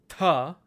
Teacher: your voice to make that sound the next letter is tah again it's an aspirated voiceless letter · it's an aspirated voiceless letter. So when you put your hand in front of your mouth, you should actually feel a big puff of air come out